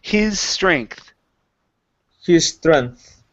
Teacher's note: So instead of saying his strength, create one S sound only. So instead of his strength, it's his strength.